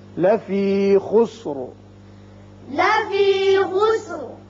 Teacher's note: جب آپ اگلی آیت سے ملانا چاہیں گے تو خسرن پڑھیں گے اور اس کے ساتھ ساتھ را باریک ہوگا، اور اگلی آیت میں چونکہ پہلے حمزہ آ رہا ہے لہذا یہاں اظہار بھی ہوگا، اظہار حلقی، اور وقت کی صورت میں را پر ہوگا اس لیے کہ پہلے پیش آ رہا ہے